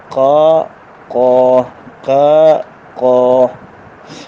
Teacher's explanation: قاف سیدھا سادہ زبان کے پچھلے حصے کو حل کی طرف کھینچ کر آواز خود بخود موٹی ہو جاتی ہے